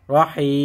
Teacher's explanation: রহিম যত জায়গায় ওয়াকফ করবেন তিন আলিফ টান হবে